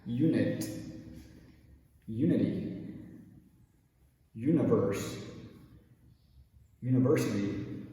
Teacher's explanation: And all four of those words, you notice, they start with the letter U, they're followed by the letter N, followed by the letter I. So if you see U-N-I in English, it will probably be pronounced like U instead of oo.